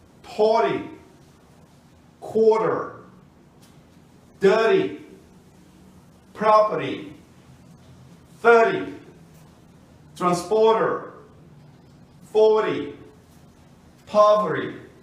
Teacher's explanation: O T também passa a ter som de R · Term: T com som de R